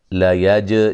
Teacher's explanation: جیم پہ قلقلہ کریں گے